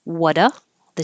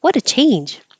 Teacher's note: the T changes to a d